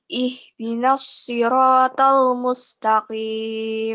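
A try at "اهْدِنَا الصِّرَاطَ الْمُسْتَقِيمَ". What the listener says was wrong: Bagus ya. Tapi jangan mustaqimnya jangan kepleset ya. Itu sa biasa ya, bukan sod. Jadinya tadi kayaknya lidahnya masih berada di posisi tebal. Maka ketika mau bilang mustaqim, Tahu-tahu mustaqimnya agak tebel. Mustaqim.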